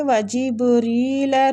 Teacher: ری کسرہ کی وجہ سے باریک پڑھی جائے گی